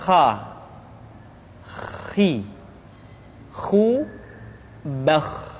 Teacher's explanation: tenggorokan Kha pangkal tenggorokan diucapkan dengan mengalir nafas atau lebih praktisnya pengucapan huruf k persis terdengar seperti orang yang tidur dalam keadaan mengorok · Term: huruf Kha